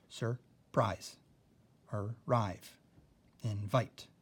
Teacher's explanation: You can see I'm accenting the second syllable because that's where the long I falls.